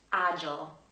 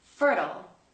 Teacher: Something else you'll notice in the American accent is when the words end with I-L-E. In British English, we say I'll, but in American English, these tend to be ul.